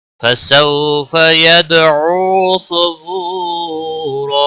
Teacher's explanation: सबू वाउ मद्दा है, एक अलिफ के बराबर खींच कर पढ़ेंगे। रा दो जबर को बदल कर एक जबर के साथ पढ़ेंगे, वक़फ़ की सूरत में एक अलिफ के बराबर खींच कर वक़फ़ होगा, और रा को पूर्व भी पढ़ेंगे, वक़फ़ बिल इब्दाल होगा।